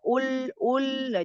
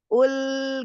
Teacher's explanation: kalau yang ul, nah belakangnya jangan ikut naik, ya